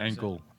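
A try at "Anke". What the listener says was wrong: It's Onk. The E is silent. It's just Onk.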